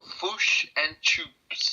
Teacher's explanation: The short I is flattened and pronounced like U.